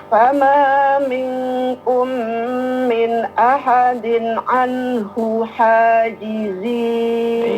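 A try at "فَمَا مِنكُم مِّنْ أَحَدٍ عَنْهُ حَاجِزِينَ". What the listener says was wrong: Iya, posisi hanya kurang tepat. Memang ketika ha berhadapan dengan ha itu agak susah ya. Anhu ha.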